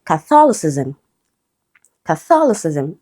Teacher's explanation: Okay, so it's stressed on the second syllable.